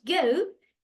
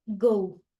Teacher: lleva una shua delante de la u